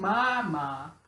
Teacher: the bilabial, using both lips to produce a sound